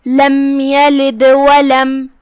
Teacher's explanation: آخری میں دال پہ جزم ہے، یہاں دال کا حکم ہے قلقلہ، ہم اسے ہلائیں گے، وہ چاہے ہم کلمت یلد پہ رکیں یا آیت کو ساتھ میں پڑھیں، دونوں حالت میں دال کا حکم ہے قلقلہ، تو ہم اسے ایسے پڑھیں گے لم یلد ولم.